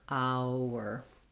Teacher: you have that gliding wu sound as you move from the diphthong ow into the tight back er